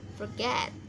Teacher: penekanannya di suku kata kedua get, itu forget